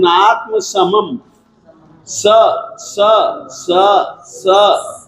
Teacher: ये दंत्य स है। जब आप इसका उच्चारण करेंगे ना तो नात्म समम, स स स स, दांत से जबान छुएगी